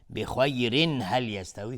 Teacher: بخیرن هل میشه اظهار حلقی